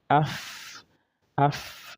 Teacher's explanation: the two teeth above is going into the inner part of the lower lip, okay. So we have af, but just make sure you don't exaggerate it. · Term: fa